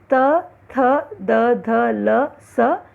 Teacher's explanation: दांतों पर जीभ के लगने से त, थ, द, ध, ल, स वर्ण निकलते हैं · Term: दंत्य